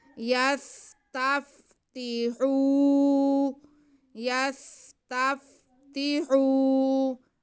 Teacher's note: یستف، آگے تا کے نیچے زیر اور ہا پہ پیش ہے اور واو ساکن ہے تو یہ واو مدہ ہو گیا، ہا کی آواز کو ہم کھینچیں گے۔ یستفتحو، یستفتحو، آگے نون پہ زبر ہے، اسے بالکل نہیں کھینچا جائے گا۔